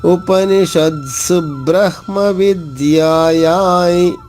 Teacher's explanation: ఉపనిషత్సు బ్రహ్మ, సుబ్రహ్మ, సు తర్వాత వెంటనే బా పట్టుకోవాలి